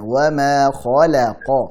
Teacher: Wa ma khalaqaz zakara. Khala, lanya dibuka ya, ditipiskan